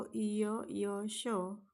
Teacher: हे तालूला स्पर्श करत असल्यामुळे त्यांना तालव्य असे नाव दिलेले आहे.